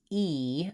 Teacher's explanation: So when I'm saying e, I want to make sure I really have a nice tense high tongue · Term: e vowel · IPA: /i/